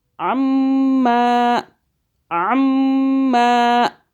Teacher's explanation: میم مشدد گنہ کر رہے ہیں 2 سیکنڈ کے لیے